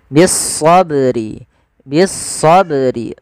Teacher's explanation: ba yang berharakat sukun maka ini kita namakan dengan bacaan Qalqalah Qalqalah yaitu bacaan yang dia memantul